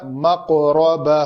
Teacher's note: یہاں پہ میں نے پڑھا مقربہ، قاف کو پر بھی کیا اور قلقلہ بھی کیا